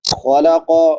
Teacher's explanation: من خلق السماوات، نون ساکن کے بعد حروف حلقی میں سے خا ہے تو یہاں پہ اظہار ہوگا، اظہار یعنی حرف کو ظاہر کر کے پڑھنا۔ خلق خا پر پڑھی جائے گی، قاف بھی پر پڑھا جائے گا کیونکہ دونوں موٹے حروف میں سے ہیں۔